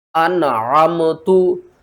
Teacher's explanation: نون ساکن کے بعد حروف حلقی میں سے عین آ رہا ہے تو یہاں پر ہم کیا کریں گے؟ اظہار کریں گے